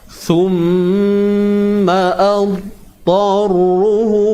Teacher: Tebalkan huruf dha, jangan lantun.